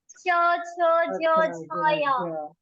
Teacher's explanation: जीभ से अग्रभाग से तालु से स्पर्श होता है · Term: चा वर्ग